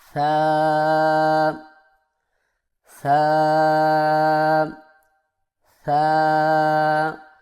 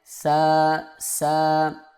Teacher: زبان کی نوک کو سامنے والے اوپر کے دو دانتوں کے اندرونی کناروں سے نرمی سے لگا کر باریک آواز میں اس کو پڑھیں، یعنی ثا ثا ثا.